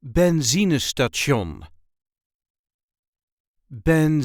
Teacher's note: there is a light emphasis on the second syllable